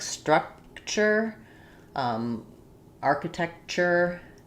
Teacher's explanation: So in TURE, architecture, it is always pronounced as a CH. So if you have a T at the end like structure, architecture, you're going to have that ch sound.